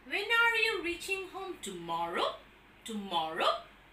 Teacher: So that is a falling tone on more, because in more we have the accent